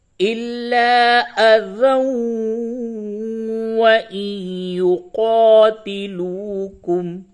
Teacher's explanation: مع الغنہ ہوگا، تو یوں پڑھیں گے الا اذا وان یقاتلوکم، ملا کے پڑھیں گے تو ذال کو واو سے ملائیں گے ، تنوین کے بعد حروف یرملون میں سے واو ہے، ادغام · تنوین کے بعد واو آیا ہے، ادغام مع الغنہ ہوگا